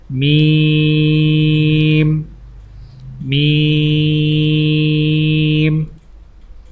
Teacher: میم میم میم کی ادائیگی میں ہونٹوں کے خشک حصے کو قدر نرمی سے ملا کر باریک آواز میں پڑھیں